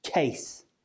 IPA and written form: keɪs (case)